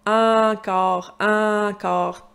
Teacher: très nasale, très vers l'avant de la bouche